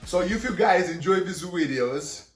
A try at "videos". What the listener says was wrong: Video. That's his accent. So where he's from, in Russian, V is pronounced W. Right? Yes, because they say Lisa instead of Visa.